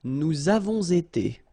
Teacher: So here double liaison, nous avons été